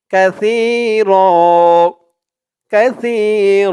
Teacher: সময় তো এখানে আরবিতে ছা হবে তাই উচ্চারণ করতে হবে কাসির র বলে এক আলিফ টান দিতে হবে